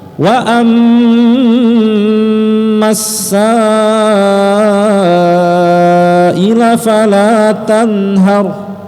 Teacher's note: Sa-nya panjang 5 harakat, mad wajib muttasil.